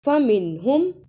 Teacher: نون ساکن کے بعد اگر حمزہ ہا عین ہا غین خا میں سے کوئی بھی حرف آئے تو اظہار ہوگا، غنہ نہیں کرنا، یعنی نون کی آواز صاف آئے۔ فَمِنْهُمْ بھی با کنچے زیر، اسے جلدی پڑھنا، ہا کنچے کھڑی زیر ہے، اس پہ تھوڑی دیر لگانی ہے۔